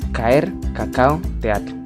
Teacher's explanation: Ahora vamos a hablar del hiato. Son dos vocales seguidas que forman dos sílabas. Cuando hay dos vocales fuertes juntas, siempre hablamos de hiato, porque esas dos vocales pertenecen a dos sílabas distintas.